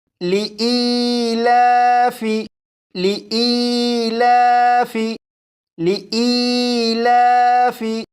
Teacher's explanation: اس لفظ میں آپ دیکھیں یہاں پر یا ساکن ہے، یا ساکن سے پہلے زیر ہے، لہٰذا یہ یا مدہ ہوا، اور یا مدہ کو 1 الف کے برابر کھینچ کر پڑھتے ہیں۔ یہاں پر لام کے اوپر کھڑا زبر ہے، اسے بھی 1 الف کے برابر کھینچ کر پڑھیں گے